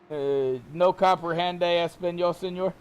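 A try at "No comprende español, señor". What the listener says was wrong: You gotta roll your R's in Spanish.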